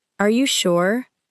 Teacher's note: A gentle rising tone may sound like a normal request for confirmation.